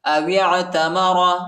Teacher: فمن حج البیت او اعتمر واو کو عین کے ساتھ ملائیں گے، عین ساکنہ ہے، الف نہیں پڑھا جاتا، الف پر حرکت نہیں ہے، اور را کو موٹا پڑھیں گے